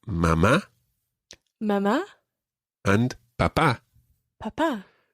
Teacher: mama and papa both have accents on the last syllable